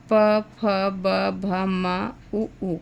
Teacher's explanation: प वर्ग और उ ऊ का उच्चारण ओष्ठ से होता है